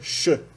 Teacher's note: faral surda o x representa a palatal x ou mais cientificamente a fricativa pós aveolar surda